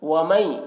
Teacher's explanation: ومئی، نون ساکن کے بعد یہاں پر یا ہے حروف یومن میں سے، تو نون کو یا سے ملا کر غنہ کے ساتھ پڑھیں گے، اس کو ادغام ناقص کہتے ہیں۔